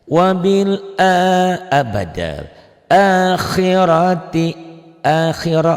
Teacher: ranya tebal tafhim karena rohnya baris di atas baris patah.